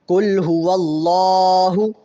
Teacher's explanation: یہاں پہ اللہ کے لام سے پہلے چونکہ زبر ہے، اس لیے یہاں پہ ہم اللہ کا نام موٹا پڑھیں گے